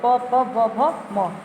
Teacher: ये ओष्ठ का इसमें प्रयोग होता है, इसका उच्चारण स्थान ओष्ठ है। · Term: प वर्ग